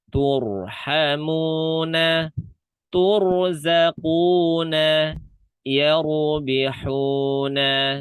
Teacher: Ro sukun sebelumnya dhammah juga dibaca tebal. Tur. Bukan tur.